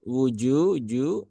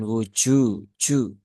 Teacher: jim ini dia punya sifat Jahir Ya sifatnya jaher ya bukan bukan Hames ya maka bukan wujuju nah ini yang masih sering kita temukan